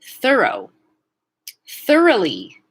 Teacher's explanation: the beginning, voiceless TH into a schwa R, thur